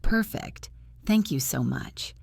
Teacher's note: getting the tone right, that friendly upward intonation, is what makes you sound fluent and natural